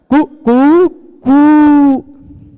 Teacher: वह पहले बार ह्रस्व रहता है, उसका फिर दीर्घ रहता है, फिर प्लुत रहता है, कु कु, फिर उससे भी बढ़ के कु, वो वाला 3 वाला, है ना, सुना होगा आपने।